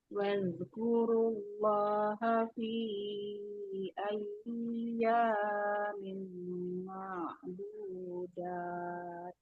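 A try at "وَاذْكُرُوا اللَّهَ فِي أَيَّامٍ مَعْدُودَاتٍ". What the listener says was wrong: Nah, huruf ya sukun ini dia jangan ditahan terlalu lama. Tidak ayya. Ayya. Ya-nya juga hanya 2 harokat saja. Fi ayyamin ma'dudat.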